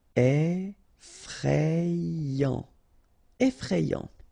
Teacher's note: remember, final T not pronounced.